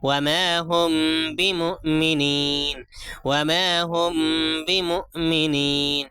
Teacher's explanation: یہاں پہ کیا ہے میم ساکن ہے، میم ساکن کے بعد با ہے، اس لیے کیا ہے اس کو ناک میں چھپا کر پڑھیں گے، اخفاء شفوی ہوگا